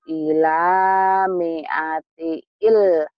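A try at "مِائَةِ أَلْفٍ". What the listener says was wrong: mi'ati alfin bukan jadi ilfin mi'ati alfin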